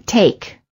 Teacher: the lips are not rounded and they are relaxed and the tongue is tense moving from mid High position to high position